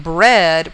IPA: bred